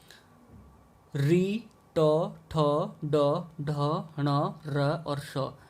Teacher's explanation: इनका उच्चारण स्थान होता है मूर्धा, और इन वर्ण को कहते हैं हम मूर्धन्य